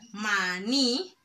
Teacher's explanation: Y ahí me doy cuenta que maní, la sílaba tónica es en la ni.